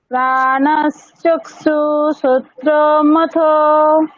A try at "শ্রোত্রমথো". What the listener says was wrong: শ্রোত্রমথো, শ্রোত্রমথো টানুন। শ্রোত্রমথো। অনেকটা এরকম।